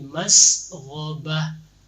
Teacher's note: Sinnya tambah angin sedikit lagi, masghaba ya, tambah sedikit lagi biar ada beda antara sa dengan sa ya, harus tambah angin sedikit lagi.